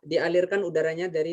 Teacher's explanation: Ketambahan huruf H ya. H-nya lebih lembut. H. Dialirkan udaranya dari tenggorokan.